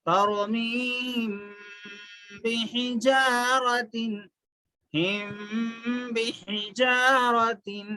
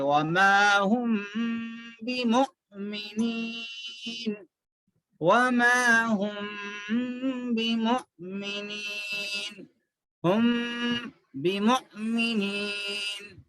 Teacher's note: میم کی آواز ناک میں رکھتے ہوئے با ملا کے پڑھ دیتے